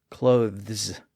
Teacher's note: it's really difficult to pronounce that voiced th sound before an s